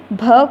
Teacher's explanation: भ का उच्चारण स्थान होता है ओष्ठ